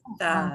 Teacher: So the D off the end will sound like a th.